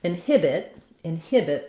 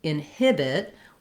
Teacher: we have second syllable stress and so inhibit what i want is to have the length